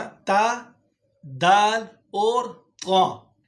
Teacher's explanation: زبان کا سرہ جب ثنایا علیہ کی جڑ کے ساتھ ٹچ ہوگی تو یہاں سے تا، دال اور طا ادا ہوں گے